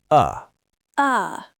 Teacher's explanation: The tongue is entirely relaxed right in the middle of your mouth. It is not touching the roof of your mouth. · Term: schwah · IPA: /ə/